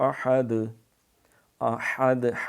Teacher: ہا گلے سے رگڑاتے ہوئے، احد، وہ 2 آنکھوں والا ہا نہیں پڑھنا، اس کا معنی بڑا خطرناک ہے، پھر نعوذ باللہ ترجمہ بالکل بگڑ جائے گا، بدل جائے گا، وہ تباہی اور بربادی کا معنی نکل آئے گا۔